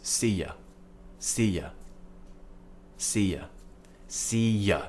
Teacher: so U is being pronounced as yeah because it's week again we're not stressing the word you